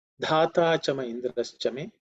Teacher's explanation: the first letter dha, is the fourth letter in the tha varga, so it has to be aspirated